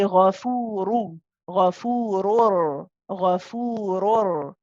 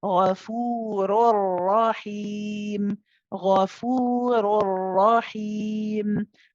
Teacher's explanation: the noon has completely gone, and there's no ghunna. · that noon that you hear is going to become a copy of the next letter, which is a ra. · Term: bidun ghunna